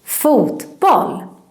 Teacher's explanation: we kind of put emphasis or stress in every word in this compound word so that's why it sounds like this foot pol and this